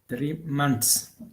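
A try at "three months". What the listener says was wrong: There is s, so we have to pronounce s. If you remember, if there is s after any word, 3 months. Months. Months. Months.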